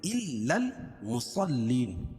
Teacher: صاد کو موٹا پڑھیں گے کیونکہ حروف مستعلیہ میں سے ، اور صاد کے بعد لام پر تشدید ہے، تشدید والا